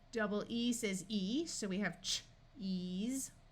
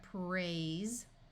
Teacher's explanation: Then the S will also take on its buzzing voice sound of Z.